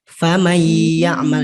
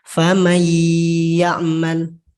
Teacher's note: Jadi seolah-olah nun matinya nggak ada. Kemudian langsung masuk ke huruf setelahnya dan diberi tekanan atau dengung sedikit. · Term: idgham bigunnah